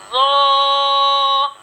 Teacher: आप ये देखें कि जो ज़ो अदा कर रहे हैं इसका जो मखरज होगा ये होगा ज़बान का सिरा और ऊपर की दांतों के अंदरूनी किनारे से ज़ो अदा होता है।